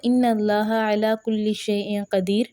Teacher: تو آیت چونکہ مکمل ہو رہی تھی، آخر میں نون تنوین آ چکا ہے، تو اب کیا ہوگا کہ اس کو ایک پیش پڑھا جائے گا، یعنی کہ یہاں پر قدیر رن نہیں پڑھا جائے گا، وہ غلط ہو جائے گا، اس لیے کیونکہ آیت بھی مکمل ہو رہی ہے، وقف بھی آ چکا ہے.